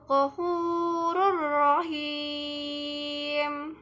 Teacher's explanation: bunyi nun mati atau tanwin dilebur dan dimasukkan ke dalam huruf yang menyambutnya tanpa berdengung. Apabila bertemu dengan salah satu huruf lam atau ra, maka dibaca dengan tempo satu harakat atau satu ketukan. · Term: idgham bila gunah